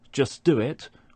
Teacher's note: For example, in the phrase just do it, where we don't pronounce the t at the end of just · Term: elision